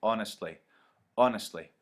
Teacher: a stress at the beginning followed by two unstressed syllables